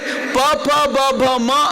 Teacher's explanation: ಎರಡು ತುಟಿಗಳು ಕನೆಕ್ಟ್ ಆಗುತ್ತವೆ